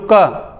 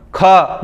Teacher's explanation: इनको बोलने में ज्यादा हवा निकलती मुंह से। मैं बोलूँ क नॉर्मल, ख ज्यादा हवा निकलेगी। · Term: महाप्राण